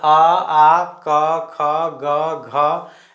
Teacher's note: और इसको आप उच्चारण करके भी देख सकते हैं डायरेक्ट आ, हर्षे, दीर्घे, हर्षो, दुर्गु, सॉरी मतलब आ, क, ख, ग, घ, इस सब में डायरेक्ट कंठ से आवाज़ आता है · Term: कंठ वर्ण